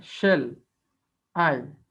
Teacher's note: So there are two syllable here. So first one is unstressed, that means no press, no pressure here. And I, there is a pressure here. Whenever we pronounce I, we give a pressure, we give a stressed, and that is why it is called stressed, and it is unstressed.